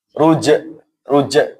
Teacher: Tidak boleh juga jim ada angin yang berembus.